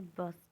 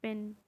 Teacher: साउंड जिसको बोलते वक्त आपके लिप्स बंद हो जाएं, क्लोज्ड हो जाएं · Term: बायलेबियल साउंड्स